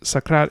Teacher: sakrat is very iambic we have this weak strong rhythm going on in the language